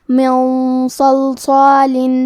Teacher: تو ہم یہ غنہ کو تفخیم سے مطلب بھاری آواز میں ادا کریں گے